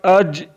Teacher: gym is pronounce from the middle of the tongue and the middle of the palette